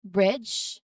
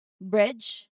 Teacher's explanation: Here the D is silent and the DG actually represents a single J sound, which is in IPA, this one.